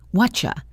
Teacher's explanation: the what and are and you merge into a single unit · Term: blend